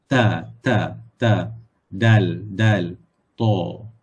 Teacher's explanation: makhrajnya adalah di hujung lidah. Hujung lidah kita tempelkan. Kita dekatkan dengan tempat tumbuh gigi bahagian atas. Tempat tumbuh gigi hadapan bahagian atas.